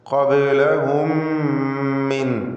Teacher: മീമിനെ മീമിലേക്ക് പൂർണ്ണമായും ലയിപ്പിച്ച് ഇദ്ഗാം മിസ്ലൈനി സഗീർ നൽകി മണിക്കുക.